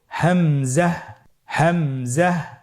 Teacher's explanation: হামজা হরফটি উচ্চারণের ক্ষেত্রে বারিক করে উচ্চারণ করতে হবে এবং এখানে টেনে পড়া যাবে না। দ্রুত পড়তে হবে।